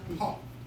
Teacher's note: it was originally pronounced as an aspirated P, heard as puff, with a puff of air at the end. That's what an aspirated P is, puff.